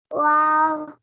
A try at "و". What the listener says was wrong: کھینچنا نہیں ہے آپ کو، یہ بتایا تھا. واو واو.